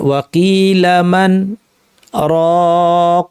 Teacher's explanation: ওয়াকিলামান বলে নিঃশ্বাসটা আটকে ফেললাম, ছাড়লাম না, নতুন করে নিঃশ্বাস নিব না, বিরতি দিব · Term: সাক্ত